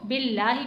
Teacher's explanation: यहाँ पर आपको लाम को बारीक पढ़ना है क्योंकि लाम मुशद्दद से पहले ज़ेर आ रहा है। तो जब भी ज़ेर आएगा, लाम से पहले ज़ेर आएगा तो हम लाम को बिल्लाही पढ़ेंगे, बिल्लाही नहीं पढ़ेंगे, बिल्लाही।